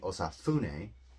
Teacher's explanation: kind of like a very breathy f